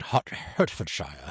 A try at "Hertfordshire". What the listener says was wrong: No, it's Hertfordshire. You can't say Shire. it's Hertfordshire.